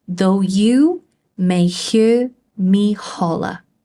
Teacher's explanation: We have an unstressed syllable followed by a stressed syllable, followed by an unstressed syllable, which is followed by a stressed syllable. And we see that again in me and holler. · So though is not a stressed word within the sentence. However, you is.